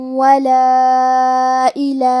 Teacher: کلمت ولا کے آخری میں الف پہ مد کا علامہ ہے. یہ مد جائز منفصل ہے تو ہم اپنی آواز 2 سے 4 مد کے برابر لمبی کریں گے. کلمت الا میں لام کے بعد کھڑا زبر ہے اور اس پہ مد کا علامہ ہے.